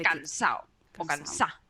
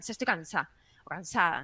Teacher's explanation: la d se relaja tanto que al final se quita